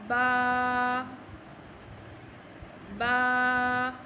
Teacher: बा को एक उंगली के मुताबिक, एक अलिफ के मुताबिक खींच कर पढ़ते हैं। बहुत ज़्यादा नहीं खींचते, सिर्फ एक उंगली के बराबर, यानी एक उंगली खुलने में जितना आपका टाइम लगेगा उतना आपने बा को खींचना है।